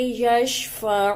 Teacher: عین کو حلق سے نکالیں گے